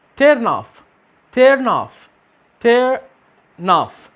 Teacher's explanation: في الحالة دي هنعمل ايه؟ هناخد آخر حرف في الكلمة الأولى ونضيفه تلقائيا للكلمة اللي بعدها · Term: consonant to vowel